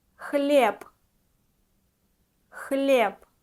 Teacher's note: B we pronounce like P at the end